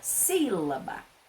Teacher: A primeira sílaba, ela tem o acento agudo, é a sílaba tônica, uma sílaba mais forte.